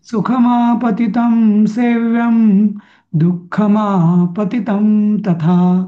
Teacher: पहिली पद्धत सगळ्या अनुस्वाराचा आपण म केलेला आहे